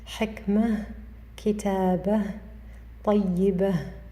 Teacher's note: when we stop on the word, we read it with a Ha